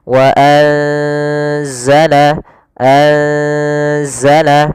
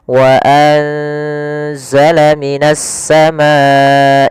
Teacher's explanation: langkah selanjutnya adalah ditahan gunahnya sepanjang dua harakat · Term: ikhfa